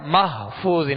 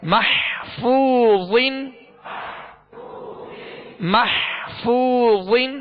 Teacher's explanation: حا کی آواز پیدا ہوگی، حا وسط حلق سے ادا ہوگا، اس کا خیال رکھا جائے کہ حا ہا نہ بن جائے